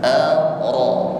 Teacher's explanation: rnya berbaris atas atau harakatnya fathah maka rnya tebal